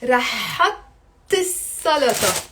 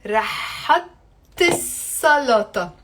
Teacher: we don't really say is salaTa. We pronounce it with the liaison, and I say rahat salaTa